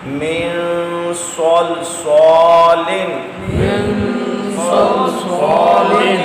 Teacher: بعد صاد آ گیا صاد پر ہے مستعلیہ بھی ہے یہاں نون ساکن میں غنہ اکفا بھی کرنا ہے اور صاد کو پر بھی پڑھنا ہے